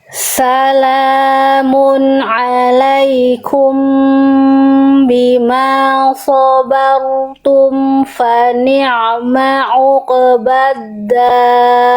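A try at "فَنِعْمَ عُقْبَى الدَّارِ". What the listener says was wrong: Oke, tapi kofnya lepas. Apa kesalahan kofnya, Bun? Apa ya? Apa Bunda? Apa kesalahannya? tipis. Di buku halaman kof sukun, kesalahan yang sering kali terjadi. Poin 3 yang tadi sempat Bunda lafalkan karena mungkin Bunda fokus sama huruf ain. Apa dilafalkan dengan pantulan yang kurang tebal alias jadi tipis. Sedangkan kof huruf yang tebal.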